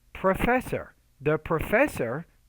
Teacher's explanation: So the stress is on the second syllable.